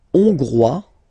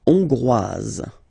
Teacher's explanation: final S not pronounced for the masculine form, and then you pronounce it here for the feminine form.